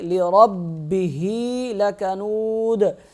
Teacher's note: را کو موٹا کریں گے، با کے ساتھ را سختی سے مل جائے گا، ذرا رک کر ادا کریں گے، لِرَبِّهِ لَكَنُودَ، دال پہ وقف کی صورت میں کریں گے قلقلہ،